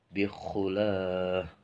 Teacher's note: ini huruf kha itu harus ada suara ngoroknya